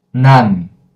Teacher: With N sound, you automatically close and don't open again.